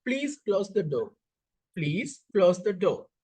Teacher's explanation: That's a falling of pitch of the voice. So this is about falling terminal junctures.